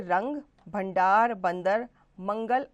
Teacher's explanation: अनुस्वार, इसका उच्चारण नाक द्वारा किया जाता है।